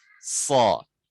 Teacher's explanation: Nah, di sini ada huruf sod, dia tebal, lidah belakang diangkat.